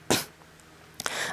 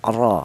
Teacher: Jadi cara bacanya huruf ra yang berharakat fathah ini ditebalkan ya. Ro yaitu menggunakan ee lidah bagian belakang diangkat ke atas. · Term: tafhim